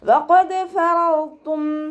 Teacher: ഖാഫ് ഇസ്തിഅലാൻ്റെ letter ആയതുകൊണ്ട് നാവിൻ്റെ ബേക്ക് മുകളിലേക്ക് പൊക്കി കൊടുത്തിട്ട് തഫ്ഹീം ചെയ്യുക.